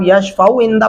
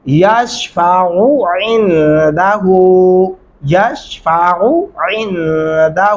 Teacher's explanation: دونوں عین الگ الگ پڑھتے ہوئے محسوس ہونے چاہیے کہ آپ نے دو عین الگ الگ وجود میں پڑھے ہیں